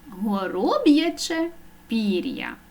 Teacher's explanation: Ми чуємо твердий приголосний б і я позначає два звуки